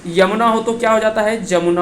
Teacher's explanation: यानी य जो है वो किस में परिवर्तित हो जाता है, ज में परिवर्तित हो जाता है